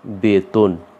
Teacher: তাহলে এই মধ্যে ত উচ্চারণ করতে যে আমরা অ পাচ্ছি, এ অয়ের উচ্চারণ আর অয়ের মতো থাকবে না, এটার উচ্চারণ হয়ে যাবে ও এর মতো। এই জন্য আমরা এখানে দেখাচ্ছি বেতন, তয় ওকার দন্ত ন, বয় একার তয় ওকার দন্ত ন। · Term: মধ্য অ